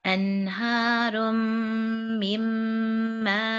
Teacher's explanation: So we're not going to say min, just like here we're not saying anharun. We're not pronouncing noon at all. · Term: silent noon